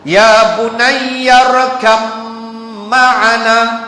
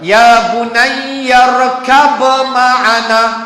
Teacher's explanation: Maka leburkan ba di dalam mim. Maka baca olehmu, ya bunayya rakam, dua harakat. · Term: idgham mutajanisain